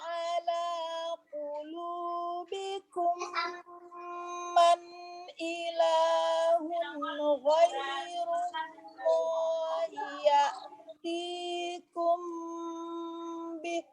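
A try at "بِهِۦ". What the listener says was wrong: Tapi gara-gara ngejar nafas, hak terakhirnya jadi nggak sempurna, Ustazah. Ya, jadi hak itu kalau di akhir tuh boros banget nafas. Bih. begitu. Kalau kehabisan nafas, bih nggak nyampe ya.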